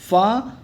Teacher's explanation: फा ओष्ठ महाप्राण और अघोष वर्ण का उदाहरण होता है